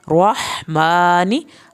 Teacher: हा को आपने हल्क से पढ़ना है